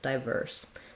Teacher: But you also can say it with a clear I diphthong in the first syllable. Just make sure that you're still stressing the second syllable. So if you're saying diverse, you still want the length on the verse syllable, diverse. · you still want the length on the verse syllable, diverse. So two correct pronunciations for diverse, diverse, not with stressing on or diverse.